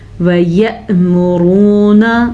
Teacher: یہاں پہ یہ را پر ہے کیونکہ را پہ پیش ہے